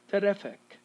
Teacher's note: between the f and the k sound we're going to have a schwa